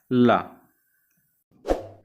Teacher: जो पार्श्विक व्यंजन आपका होता है वो होता है आपका ला